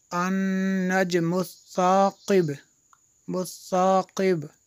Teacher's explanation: ये बा पे क़लक़ला होगा